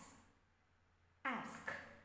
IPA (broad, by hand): æ